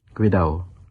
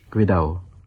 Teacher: notice that the second D isn't pronounced, another feature of Philippine Spanish